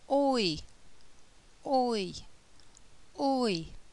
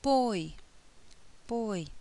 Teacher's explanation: the mouth begins open for o and moves to closed for I, oi, oi. So the jaw moves up throughout this diphthong.